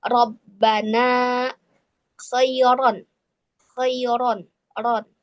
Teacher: ro yang berharakat fathah, ro berharakat fathah tanwin dia dibaca tebal